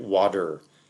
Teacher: To go through them in the order that they're on screen now, right? That T can for someone like me from North America, we'd typically pronounce it like what is written as a D